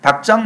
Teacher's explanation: 닭장 마찬가지로 리을 기역입니다만 자음군 단순화에 의해서 기역만 소리가 납니다. 기역 뒤에 오는 지읒이 된소리로 바뀌었고요.